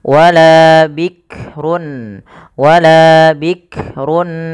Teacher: bikrun ya hati-hati dalam melafalkan huruf Kaf tidak langsung bikrun Bik jangan sampai memantulkan huruf Kaf karena Kaf tidak punya sifat Qalqalah